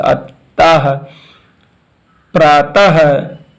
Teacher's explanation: विसर्ग का उच्चारण हल्के हा की तरह एक छोटे से झटके के साथ किया जाता है